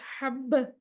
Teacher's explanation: बा में जहर भी है, शिद्दत भी है, बा को सांस भी रुक रही है, आवाज भी रुक रही है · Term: कलकला